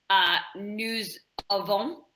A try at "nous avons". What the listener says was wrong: Join them together. Yeah, it's quite important because this is how you can tell them apart. This is how you tell they are and they have apart in French.